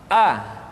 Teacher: ada pada tenggorokan yang terjauh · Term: huruf a